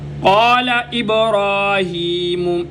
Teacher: را کو موٹا، ایک الف کی مقدار لمبا، ہا کے نیچے کھڑی زیر ہے، ایک الف کی مقدار ہا کو بھی لمبا۔